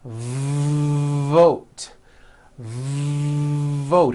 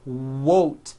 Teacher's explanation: you've got to stretch out the V like this vote vote are you hearing that long V sound